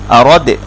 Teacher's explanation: দাল সাকিন এটা কলকলা হবে, অর্থাৎ বায়ের মতো সাউন্ডটা রিভার্ভ করে ফেরত আসবে